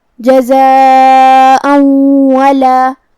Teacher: مد واجب متصل کا معنی ہے کہ حرف المد اور اس کی وجہ جو کہ حمزہ ہے دونوں ایک ہی کلمہ میں ہو۔ مد واجب متصل میں ہم اپنی آواز 4 مد کے برابر لمبی کریں گے · حمزہ پہ تنوین زبر ہے، پھر حرف الواو ہے، تو یہاں حکم ہے ادغام بغنہ